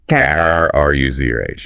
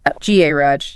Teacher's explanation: American English commonly stresses the second syllable.